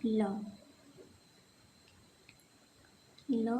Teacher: ल बोलते समय हमारी जीभ बेलन की तरह गोल होती है और हवा हमारे जीभ की साइड से निकलती है बाहर। हवा हमारे जीभ की साइड से निकल जाती है। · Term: पार्श्विक